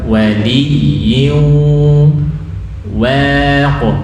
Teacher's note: Wali waq, wawunya tipis, qalqalah tebal. Waq bukan wa, waq.